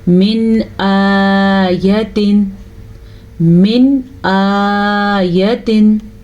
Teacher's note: پھر ہم نون ساکن کو ظاہر کر کے پڑھیں گے، نون تنوین کو ظاہر کر کے پڑھیں گے اور بغیر غنّے کے پڑھیں گے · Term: اظہار